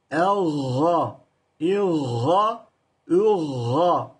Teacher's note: Elga geride. Boğazın tam kesişim noktasında. Yani yutak noktasında.